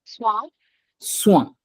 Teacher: do you hear that nasal sound coming out of your uh nose